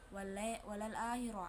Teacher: takfim karena ro berharokat fathah, cara bacanya ditebalkan